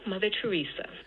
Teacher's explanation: the second syllable is what's being stressed here in Teresa, and that's where the downstepped H star is. So this whole thing starts out at a relatively high part of the speaker's pitch range, and then it goes down a bit to get to that accented or stressed part of the pitch accent. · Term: down step H star